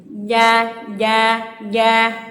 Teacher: Huruf ja ini tengah lidah dengan langit-langit. Ja tengah lidah ya, jangan ujung lidah atau pangkal lidah, tapi tengah lidah.